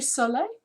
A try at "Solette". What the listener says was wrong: Solette. They're not French. You actually pronounce all the words, letters.